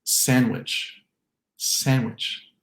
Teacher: I'm talking about a T or a D sandwich, which is descriptively silent, just like the D in the word sandwich. For many speakers, this D between 2 consonant sounds will disappear, leaving us with sandwich, sandwich.